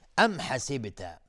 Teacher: ام حسبت میم ساکن بعدش های جیمی اظهار شفوی، با قلقله میخواد در حسب